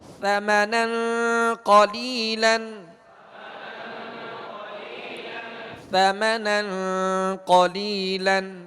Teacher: لہذا سرا زبان لگائیں گے تو, اور اگر اس اوپر والے دانتوں کے اندرونی کنارے سے یہ زبان کا سرا جمعوں کے ساتھ لگائیں گے تو پھر یہ نو کے زبان لگے گی, سرا زبان نہیں لگے گا. لہذا سرا زبان اوپر کے سامنے والے 2 دانتوں کے اندرونی کنارے سے آپ لگائیں گے تو نرمی کے ساتھ ادا ہوں گے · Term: ثا